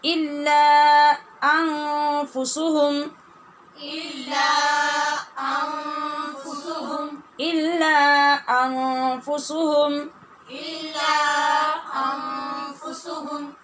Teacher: جب الف کی آواز ہوتی ہے تو اس کو لمبا کر کے روکا کیجئے اور اس کے بعد پھر دوسری جگہ پہ حمزہ جو آئے گا اس کو پھر سے اپنے مخرج سے ادا کیجئے